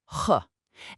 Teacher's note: It's a sound that comes from the back of your throat, more like h.